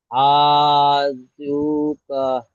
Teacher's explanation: কাফের উপরে জাবার আছে, জাবারটি হলো হারাকাত, হারাকাতকে তাড়াতাড়ি পড়তে হয়, টান দেওয়া নিষেধ। · অও সাকিনের ডান দিকে পেশ আছে, অ মাদ্দা হবে। ও মাদ্দাকে 1 আলিফ পরিমাণ টান দিয়ে পড়তে হয়।